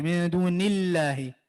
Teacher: لفظ الجلالہ سے پہلے زیر ہے تو اس کو آپ باریک پڑھیں گے. من دون اللہ, موٹا نہیں کر کے پڑھیں گے.